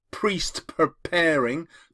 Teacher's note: The consonants of the repeated P's feels quite violent. These are called plosive sounds, as in explosion, plosive. So it's a violent sound which links us to how these people have died.